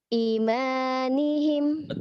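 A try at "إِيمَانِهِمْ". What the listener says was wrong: i-nya panjang i-nya panjang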